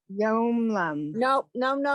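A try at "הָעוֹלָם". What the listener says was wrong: Secondly, there's no Y sound in that last word, so try it again, please.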